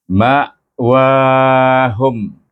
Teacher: Hukum mim mati ataupun hukum mim sukun kita baca dengan izhar syafawi. Dengan tutup bibir kita.